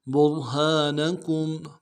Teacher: با کو را کے ساتھ ملانا ہے، را کو موٹا ادا کریں گے ، ہا کے ساتھ الف مدہ ہے، ایک الف دال میں